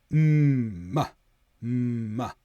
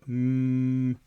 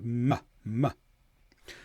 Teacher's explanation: All you have to do here is close your lips, push the air through your nose. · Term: nasal sound